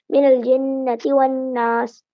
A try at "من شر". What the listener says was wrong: ہاں بس یہاں پر تم نے غنہ کم کیا ہے من شرل پہ من پہ غننے کی مقدار کم تھی آپ پڑھیں